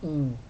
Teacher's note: o N faz com que esse I seja nasal. Sai o som aqui pelo nariz. Então, o I vai ficar IN.